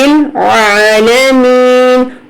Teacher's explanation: عین پڑھیں گے، عالمین، حمزہ نہیں پڑھیں گے